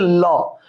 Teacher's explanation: পার্শ্বিক ব্যঞ্জন হচ্ছে ল। যখন ল উচ্চারণ করি মুখের দুই পার্শ্ব দিয়ে বাতাসটা বের হয়ে যায়। বাতাস বেরোতে না পারলে এটাকে আমরা ল উচ্চারণ করতে পারবো না।